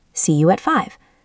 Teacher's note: Focus on making the at very short and weak.